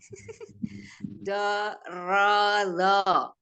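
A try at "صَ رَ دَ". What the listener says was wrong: So dulu. So. Kenapa dorodo? Ini tidak ada titiknya. So dulu ini. So, ro, do. So, ro, do.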